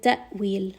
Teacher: Hamza has jahr, it has shidda, so we're going to make sure to give it a little bit of that jerkiness, abruptly stop the sound in your throat in order to give it that proper sound of Hamza.